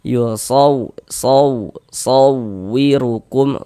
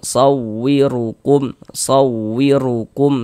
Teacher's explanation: sehingganya intonasi suara kita itu sedikit lebih tinggi dibandingkan dengan huruf-huruf di sampingnya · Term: Naber